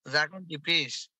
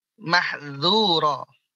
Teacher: Ya, dia punya sifat istifal. Tidak naik ujung lidahnya dan juga infitah, terbuka mulutnya. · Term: huruf zal